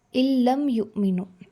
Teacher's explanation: جن اسٹوڈنٹس کو یہ رول آتا ہے انشاءاللہ پلیز اسے فالو کر لے، جن کو اس کا آئیڈیا نہیں ہے اس کو یاد رکھے کہ آپ نے الف جو زیر کے ساتھ آ رہا ہے، کسرہ کے ساتھ آ رہا ہے، آپ لام کے ساتھ ڈائریکٹلی ملائیں گے، نون کو ڈراپ کر دیں گے۔ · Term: ادغام